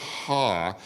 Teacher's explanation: when you're saying H and when you're saying the sound ah your mouth is in the same configuration